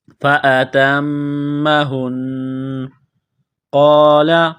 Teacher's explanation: ہا کو نون کے ساتھ پلس کرنا ہے، نون مشدد پر غنہ کریں گے